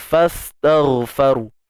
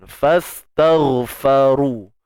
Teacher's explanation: Ra baris depan tebal. Huruf ra mati tebal. Huruf ra baris depan pun tebal.